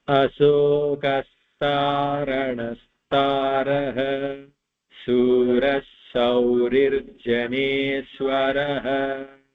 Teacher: when a visarga is followed by a sa, it becomes a double sa